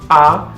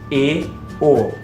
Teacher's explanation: O A sempre aberto, A, o E e o O sempre fechados